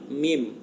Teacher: mim lahir dari pertemuan bibir atas dan bibir bawah